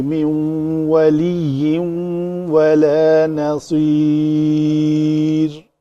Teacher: را پتلی ہوگی کیونکہ ماقبل اس کا یا ہے